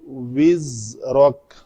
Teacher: واو کے لیے شفتن گول کر کے اس کے بعد زا کی ادائیگی ہوگی